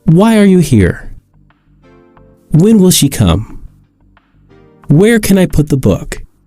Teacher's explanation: they all end in falling intonation